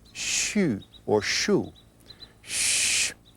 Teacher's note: the sound where the tongue is rolled into an R so the specific sound for the liver is sh with a hint of a u at the end